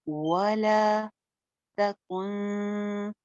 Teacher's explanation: कुन पे इख्फा हो रहा है, नून साकिन के बाद काफ है